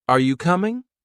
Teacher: Are you coming? With a rising tone at the end